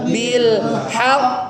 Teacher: ada huruf qalqalah bertasydid diwakafkan selesaikan urusan dengan tasdidnya ya baru keluarkan qalqalahnya